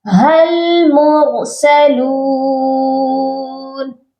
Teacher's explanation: ہا کو ہم نے لام کے ساتھ ملانا ہے، اس کے ساتھ ایک الف ہے اور ایک اور الف ساتھ ہے، یہ دونوں الف نہیں پڑھے جائیں گے